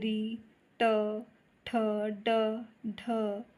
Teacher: इनका उच्चारण हम मूर्धा से करते हैं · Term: मूर्धन्य